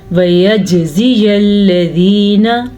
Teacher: جیم کے اوپر ساکن ہے تو یہاں پہ کلکلا کریں گے، کلکلا کہتے ہیں جھٹکے کو۔